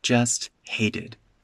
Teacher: Since hated is stressed in the sentence, I don't reduce anything around it.